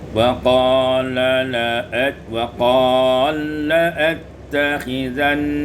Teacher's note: idghamul lam fil lam, diidghamkan lam pada lam